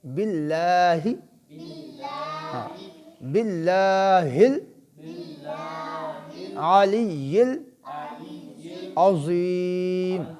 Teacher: یہاں اللہ کا لام باریک ہوگا کیونکہ اس سے پہلے با ہے، با کے نیچے زیر ہے